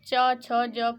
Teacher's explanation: और जब च, छ, ज का उच्चारण करते हैं तो इनको तालु व्यंजन कहते हैं, क्योंकि जब इनका उच्चारण करते हैं तो हमारी जीभ जो है ना वो तालु में टच करती है, तब इनका हम लोग उच्चारण कर पाते हैं।